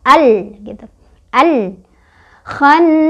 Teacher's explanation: Jadi ini dibaca alif lamnya jelas tidak boleh mantul. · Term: alif lam qomariyah